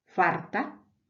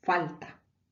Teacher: continuo del español Atlántico solemos neutralizar la L y la r en Andalucía se puede oír farta por falta